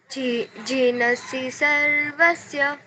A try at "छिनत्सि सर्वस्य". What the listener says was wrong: छीनत्सि सर्वस्य। बेटा झ का साउंड नहीं आएगा, छ का साउंड आएगा, छ छतरी वाला, ठीक है।